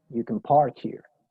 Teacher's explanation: si pones mucha atención, casi que no pronuncio la palabra, ¿sí? Can no tiene fuerza ahí, ¿sí? El énfasis lo tiene park, estacionar.